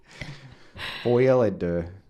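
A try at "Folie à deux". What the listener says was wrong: Not foil. Folie. I-E.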